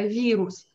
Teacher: Вирус, не вырус, а вирус, мягкий. Помните, е-ю-ю-я, и мягкий знак, soft sign.